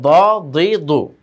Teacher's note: জিহ্বার গোড়ার কিনারা উপরে মাড়ি দাঁতে গোড়ার সঙ্গে লেগে আওয়াজটা মোটা হবে